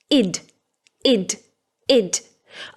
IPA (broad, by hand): ɪd